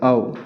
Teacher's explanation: ओ और औ का उच्चारण स्थान कंठ और ओष्ठ होता है